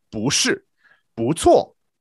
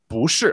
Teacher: bu is fourth tone, but if it comes before another fourth tone, then it goes second tone.